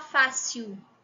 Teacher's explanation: o l aqui no final com o som de u · Mas aqui no Rio a gente tem mania de falar fácil, né? O L, quando aparece no final, normalmente a gente fala com o som de U.